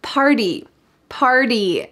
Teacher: notice that the t changes to a d here in american english